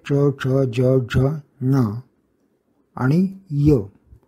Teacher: च वर्ग म्हणजे च, च, ज, झ, न आणि य या सर्वांचं उच्चारण स्थाने तालू आहे. उच्चारणात सूक्ष्म फरक असतो.